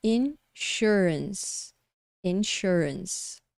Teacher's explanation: a gente tem a sílaba tônica é a segunda Essa é a sílaba que você vai falar mais forte